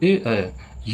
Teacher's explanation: ए ऐ है कंठ और तालु से उच्चारण इनका। और ओ औ कंठ ओष्ठ से है। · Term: संयुक्त स्वर